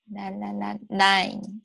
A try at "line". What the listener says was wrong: Nope, you went back to nine. You closed it off. La la line. Nope, you went back to nine. You're going back to nine. You're closing it off. Feel that line, right?